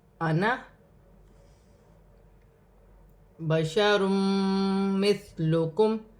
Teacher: انا، یہاں الف مدہ بن رہا ہے، لیکن قرآن پاک میں جب بھی انا کا لفظ آئے گا تو اسے کھینچا نہیں جائے گا، الف مدہ کو کھینچا نہیں جائے گا، جلدی سے پڑھا جائے گا